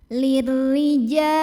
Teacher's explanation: Maka bacanya ditipiskan, pangkal lidah datar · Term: tarqiq